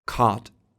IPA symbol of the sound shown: kɔt